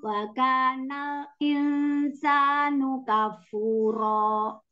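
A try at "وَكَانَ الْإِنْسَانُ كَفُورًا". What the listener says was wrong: Bukan ro ya. Kafuro. Ini mat iwat itu kalau fathah ta'in di waqaf jadi satunya dibuang jadi panjang bacanya dua harokat.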